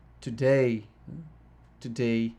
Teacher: These poetic foot names work this way. Lamb has two syllables, the first of which is unstressed, and the latter of which is stress